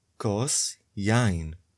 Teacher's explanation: The first syllable is stressed in the word יין.